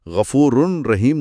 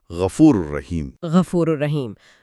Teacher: را پر تشدید ہے لیکن کوئی گونج نہیں ہے، آواز بالکل صاف اور رواں ہے · تو ہم اسے غفور رحیم نہیں پڑھتے۔ تنوین کا نون مکمل طور پر رے میں ضم ہو جاتا ہے اور ہم اسے پڑھتے ہیں غفور الرحیم۔ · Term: ادغام